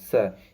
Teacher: इसको बोलने में हमारे जो स्वर तंत्रियों में होता है वह कंपन उत्पन्न नहीं होगा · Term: अघोष वर्ण